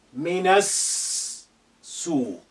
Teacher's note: The alif is silent because it's not at the beginning of a sentence. The lam is silent because of sin is a sun letter which is carrying shadda. So we linked na to, and with the first sin which is hiding there with shadda, minas suq.